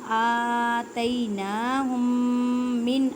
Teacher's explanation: میم ساکن کے بعد میم ہے، یہاں پہ ادغام میں شفوی کا قاعدہ کریں گے گننے کے ساتھ